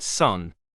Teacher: S voiceless coronal sibilant